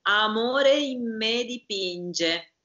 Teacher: I-N-M-E becomes a nasalization of the M. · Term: assimilation